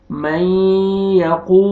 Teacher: अच्छा, बाज़ दफ़ा साथी पढ़ते हैं मैयकूलो, वाव को आपने नोज में नहीं ले जाना, यकू गलत, यकू, नाक में आवाज न लेके जाएं, आप न जाने पाए, मैयकूलो।